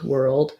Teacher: So it is like were plus old, but just know that because that is a dark L there, there's a little bit of a dark vowel schwa before it